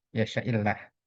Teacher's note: Ini Allah dibaca tipis karena didahului kasrah